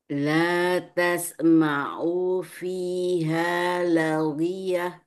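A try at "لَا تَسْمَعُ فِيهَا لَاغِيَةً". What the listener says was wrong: Perhatikan panjang-pendeknya. Pendek. La tasma'u.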